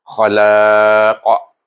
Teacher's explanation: Dan bacaannya tetap dengan hukum ma'adil sukun, tetapi pada qaf itu kita kena baca dengan qalqalah kubra sebab dia huruf qalqalah.